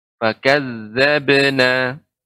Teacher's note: Ba qalqalah, maka bukan fakadzabna, akan tetapi cukup dipantulkan